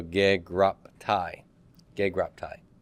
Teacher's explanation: The stop and voicelessness of it, which is to say the phi will become the voiceless stop counterpart, which is P.